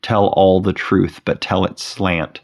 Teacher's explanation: The first line, Tell all the truth but tell it slant, is filled with T sounds, both beginning and ending with the letter T, and placing T sounds at the beginning of the second and third stressed syllable